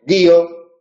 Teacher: la vocal alta o cerrada es la tónica